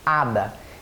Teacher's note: O H em espanhol, que é o H, não tem som, portanto você fala ada.